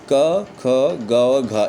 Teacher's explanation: इसका उच्चारण जो होता है वह कंठ से होता है।